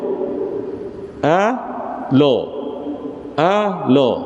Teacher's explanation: Yang tafkhim jadi tebal tu pada la jadi lo sahaja.